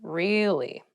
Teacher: to show that you're not so interested in the conversation with downward intonation